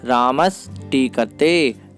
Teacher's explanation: जो दंती सा था वह मूर्धन्य सा में परिवर्तित हो गया